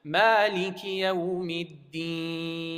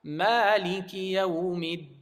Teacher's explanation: There's no nasal sound in that E part. So you're supposed to recite it without any nasal sound.